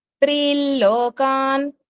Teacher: okay ఇక్కడ చూడండి రెండో లైన్లో త్రీం లోకాన్ అది చదివినప్పుడు ఏంటంటే అక్కడ అనుస్వరము ఎల్ కింద మారుతుంది ఎల్ అంటే ఇల్ ల కి పొల్లు కింద త్రీల్ లోకాన్ త్రీన్ లోకాన్